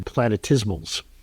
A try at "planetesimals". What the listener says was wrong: Don't they call it planetesimals? Well, you said planetismals. Yours rhymes with dismal. Or decimal. No, yeah, tesimal. Planetesimals. Planetesimals.